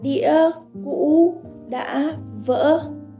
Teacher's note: High to low and then sudden rise. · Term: broken tone